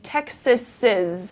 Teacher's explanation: if the noun is Texas, we say Texas's. So it's sort of that extra Z sound.